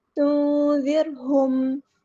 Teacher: تنذرہم، را باریک ادا کرنا ہے، تنذرہم، ہاں سمپل ادا کرنا، میم پہ ٹائم نہیں دینا، اظہار شفوی ہو رہا ہے